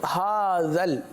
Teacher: हा पर खड़ा ज़बर है, जाल को लाम के साथ मिलाकर पढ़ेंगे